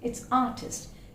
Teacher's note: Again, we find R is silent, almost silent.